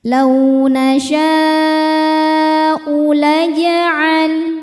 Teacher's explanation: Mad tabi'inya adalah alif didahului harokat fathah, kemudian hamzahnya u ada pada kata nasya'u, maka shinnya tidak boleh dibaca 2, dibacanya lebih panjang ya, boleh 4 boleh 5 harokat. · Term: mad wajib muttasil